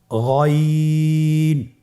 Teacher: গইন হরফটি উচ্চারিত হয় কণ্ঠনালীর শেষ ভাগ হতে।